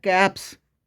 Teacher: जब voiceless consonant में एस जुड़ेगा तो साउंड आएगी स की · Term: स की साउंड